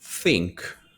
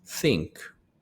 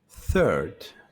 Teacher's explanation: th voiceless, no vibration in the vocal cords